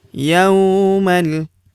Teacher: Yaumal, huruf ya kita ayun sekali karena terdapat waw sukun di depannya yang ini. Yaumal, huruf ma langsung lompat masuk ke huruf lam yang berharokat sukun, langsung masuk ke sini, alifnya tidak dibaca atau dianggap tidak ada.